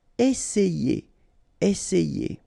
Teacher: double S, really strong S, and then it opens the E